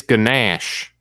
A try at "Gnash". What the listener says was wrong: The G is silent, like a real gangster.